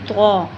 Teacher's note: इसे मोटा पढ़ने के लिए आपने मुंह को गोल नहीं करना है, होठों को आपने नॉर्मल रखना है। ज़ुबान की नोक को आपने ऊपर के 2 दांतों की जड़ से लगाना है, और मुंह को नॉर्मल रखना है, गोल नहीं करना, क्योंकि गोल आपको पता है सिर्फ़ और सिर्फ हर्फ वा के लिए ही मुंह को गोल किया जाता है।